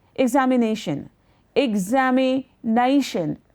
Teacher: there are 5 syllables, and it is nay that will carry the emphasis